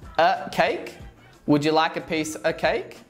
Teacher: Did you notice how of sounds like a schwa?